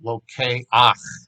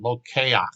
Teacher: We have a guttural again on the last syllable. Lo ke ach. So you're going to have to put that ach sound.